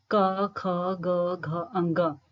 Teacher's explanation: जैसे हिंदी वर्णमाला में सबसे पहला वर्ग जो है क्वर्ग है, जिसमें जो है क ख ग घ अंग। तो जब इन वर्णों को बोला जा रहा है तो प्रेशर जो है गले पर पड़ रहा है, तो इसलिए इनका उच्चारण स्थान कंठ्य है।